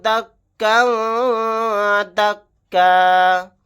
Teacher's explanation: یہاں پر کاف کے اوپر تنوین ہے، تنوین کے بعد دال آ گیا، یہاں پر اخفا کا قاعدہ ہوگا